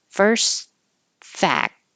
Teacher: I don't have to say the T on first because that would sound like first fact, and that's too much. · And I'm not saying the T, I'm blocking the airflow with the K.